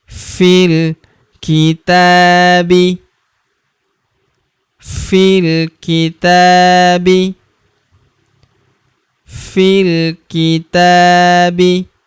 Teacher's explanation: Huruf ta kita panjangkan dua harakat karena terdapat tanda alif kecil di atasnya yang ini.